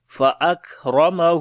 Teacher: کاف کے اوپر صفت شدت اور ہمس دونوں آئے گی